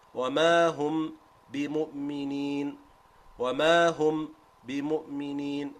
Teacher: I'm making the meme fully clear before I move to the articulation point of the ba. If I don't cut the voice, I can still do it with idhar, but it has to be similar to a qalqala.